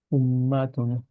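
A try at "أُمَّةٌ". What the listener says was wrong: মাতে টান হয়ে গেছে একটু, হ্যাঁ? উম্মাতুন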